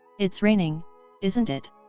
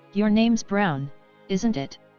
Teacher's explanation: i say the question phrase with a rising intonation